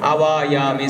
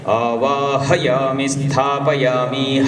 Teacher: हकार का उच्चारण, महाप्राण है ना